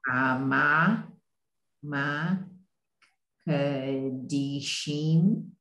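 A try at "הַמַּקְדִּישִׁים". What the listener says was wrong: Yes, so in this case, the kuf actually goes with the mem, so it's hamak dishim.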